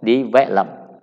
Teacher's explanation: So the stress is in the middle